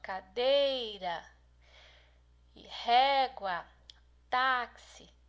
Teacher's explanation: essas aqui são as penúltimas sílabas são as mais fortes